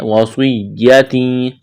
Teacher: سواد کو موٹا کرنا ہے, سیٹی کی آواز پیدا کرنی ہے